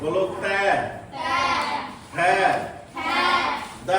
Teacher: अब जीभ कहां टकरा रही? दांत से टकरा रही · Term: दंतव्य